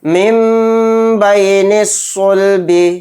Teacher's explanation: مِن بَيْنِ الصُّلْبِ، مِن بَيْنِ الصُّلْبِ، یہاں پر بھی نون ساکن ہے، نون ساکن کے بعد با گیا تو یہاں پر بھی اقلاب کا قاعدہ ہوگا، نون کو میم سے بدل کر غنہ کے ساتھ پڑھیں گے